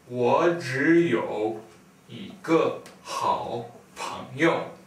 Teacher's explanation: we have a third tone and then another third tone and then another third tone so when we pronounce it we'll pronounce those first first two